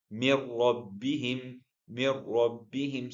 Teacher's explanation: So here you are not hearing noon letter, and you're not hearing any nasal sound. It's just a ra with a shid. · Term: idgham without ghunna